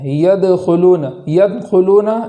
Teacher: دال کے اندر آواز لوٹائیں گے اور اس کو آواز لوٹانے کے ساتھ پڑھیں گے۔ اسی کلمے کے اندر آگے ہے خا، تو خا کو پور پڑھیں گے، موٹی آواز کے ساتھ پڑھیں گے۔ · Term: قلقلہ